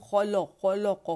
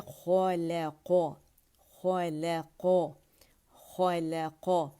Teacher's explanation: 2 موٹے لیٹرز ہیں اس کے درمیان، لام باریک ہے. اکثر کیا ہوتا ہے ہم خولو خولو قو کر دیتے ہیں، لام باریک نہیں پڑھتے.